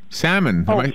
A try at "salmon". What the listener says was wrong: Salmon. The L is silent.